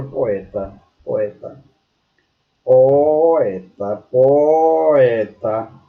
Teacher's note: O outro e último exemplo de encontro vocálico é o hiato. É a sequência de vogal com vogal em sílabas separadas.